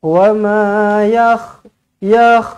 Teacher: Ada titik satu di atasnya, jadi pastikan huruf kha dia ada getaran dia lah